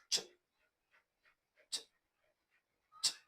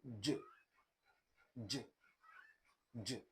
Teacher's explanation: Affricates. So these sounds combine, for instance, the manner of plosive and the manner of fricative